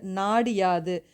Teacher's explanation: குறைஞ்சு அரை மாத்திரையா ஒலிக்குது நாடு கூட்டல் யாது நாடு யாது அந்த இடத்துல டூ அப்படிங்கிற எழுத்து டி மாறும்போது அரை மாத்திரை அளவா குறைஞ்சு ஒலிக்குது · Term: குற்றியல் லிகரம்